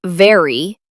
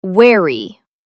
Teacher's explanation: V, your teeth touch your bottom lip. W, your lips come forward like a small circle.